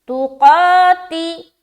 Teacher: قا میں کھینچ رہے اور لو میں کھینچ رہے، باقی کہیں نہیں کھینچنا. تو قاتلوہم، تو قاف کو موٹا بھی رکھیں گے، تو قاتلوہم.